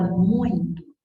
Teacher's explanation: muito é um ditongo, porque são dois sons vocálicos na mesma sílaba